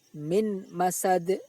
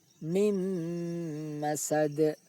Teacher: bunyi nun sukun dimasukkan ke dalam mim sambil didengungkan. Tidak boleh dibaca min masad, tetapi mim masad. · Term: idgham bi ghunnah